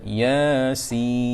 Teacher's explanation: Baik, jadi saya nak ceritanya surah Yasin ni di permulaan ayat yang pertama, bila kita baca Yasin, pertama jadi segi bacaan ya tu kena panjang 2 harakat. Ya 2 harakat, sin 6 harakat.